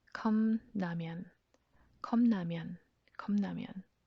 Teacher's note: After 기역 and 비읍 받침, 리을 changes to 니은 · And then notice what happens right after. Because of the nasal consonant 니은, that 비읍 받침 changes to another nasal consonant, 미음.